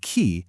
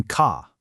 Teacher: The hard k sound in the word key is produced much further forward in your mouth than the k in car.